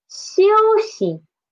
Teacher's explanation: for xi, from the start, the tongue never touches the hard palate.